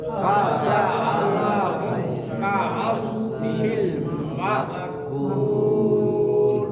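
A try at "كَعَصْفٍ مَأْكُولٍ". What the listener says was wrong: কাআসফিম গুণ হবে ফিম মাকুল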